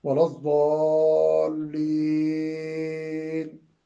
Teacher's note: چوتھی قسم ہے مد عارض وقفی، یعنی وقف جب کریں تو وہاں بھی عموماً آپ نے غور کیا ہوگا کہ حفاظ اور قاری حضرات وَلَضَّالِّينَ لمبا کرتے ہیں آخری حرف سے پہلے والی حرکت کو